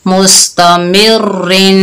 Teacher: रा मुशद्ददा है लेकिन रा के नीचे 2 जेर हैं तो रा को हमने बारीक पढ़ा